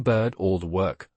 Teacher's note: The vowel merges with the R quality.